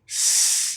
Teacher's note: the s sound is voiceless, or sometimes it's called unvoiced, meaning you don't use your vocal cords. There's no vibration.